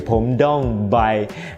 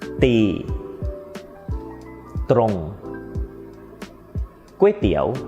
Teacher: they tend to mispronounce this /dt/ and pronounce it /d/ or ด.เด็ก instead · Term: /dt/ sound